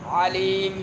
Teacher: عین کو درمیان حلق سے